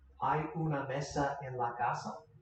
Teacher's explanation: So just what we said, as an interrogative word or a question word, the sentence structure will stay the exact same. It will just be spoken with a rising intonation.